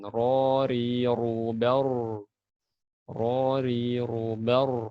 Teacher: ini perhatikan ro yang tebal. Lidahnya terangkat ke belakang.